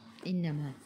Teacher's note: Innama nun ada sabdu tekan ke dalam nun dan dengung 2 harakat wajibul gunnah, wajib dengung